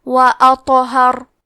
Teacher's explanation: آخری میں حرف را کا حکم ہے تفخیم، تو ہمیں را کو موٹی آواز میں پڑھنا ہے